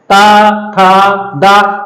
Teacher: जीभ जो है, हमारी जिह्वा जो है वो दांत में जाकर के टकरा रही है हमारे, इसलिए दंत ध्वनियां हैं।